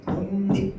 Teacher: 뒤에 있는 애가 리을이 니은으로 먼저 바뀌고요. 이 니은이 앞에 있는 기역에게 영향을 줘서 기역은 또 이응으로 바뀌는 거야.